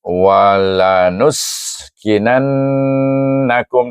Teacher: dibaca dengan wajibul ghunnah. Dengung dua harakat kerana nun bertasydid. Dan ingat nun ini bertemu dengan nun dia ada baris.